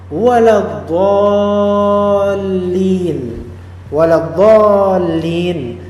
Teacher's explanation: Walaupun asalnya juga itu tetapi mad yang baru ini dol di sini e dia bertemu dengan huruf yang ditasdidkan musyaddadah yaitu huruf lam. Mad ini harus dibaca, wajib dibaca enam harakat. Tidak boleh empat, tidak boleh dua. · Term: mad lazim mutsaqqal kilmi